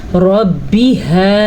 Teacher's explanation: रॉ को पूर पढ़ना है क्योंकि रॉ के ऊपर ज़बर है